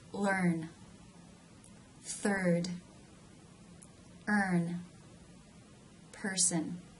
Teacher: the mid front part of the tongue is raised towards the roof of the Mouth More more than just raised the mid part of the tongue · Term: r as in her sound